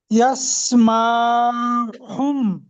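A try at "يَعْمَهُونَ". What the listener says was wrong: না ভাই, ইয়াসমা, ইয়াস নয়, ইয়া। এখানে এটা আইন আছে, এটা আইন। এখানটার গুণনা করলেন কেন ভাই? এখানে কি মিম সাকিন আছে বা নুন সাকিন আছে?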